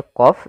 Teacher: jangan huruf Kaf tapi di huruf q ditebalkan